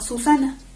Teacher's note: podemos pronunciar sonidos como la consonante obstruyente fricativa alveolar S